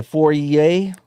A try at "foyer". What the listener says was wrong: No R in it. It's not foyer. It's foyer.